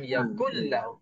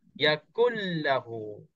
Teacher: Nun mati dalam satu perkataan, lahu tu dalam perkataan yang kedua. Apabila bertemu, nun itu diidghamkan, dimasukkan ke dalam lam. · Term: idgham bila gunnah